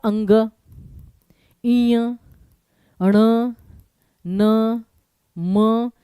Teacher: हर वर्ग का पंचमाक्ष अक्षर जहां पे नाक का प्रयोग होता है। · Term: नासिक्य ध्वनियां